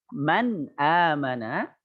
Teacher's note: Dikala nun sukun atau tanwin bertemu dengan salah satu huruf izhar yang 6 tadi, maka dibaca jelas, tidak didengungkan